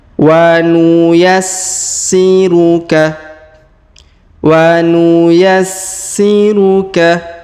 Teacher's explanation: perhatikan huruf si di sini berharakat tasdid maka kita tahan dan tekan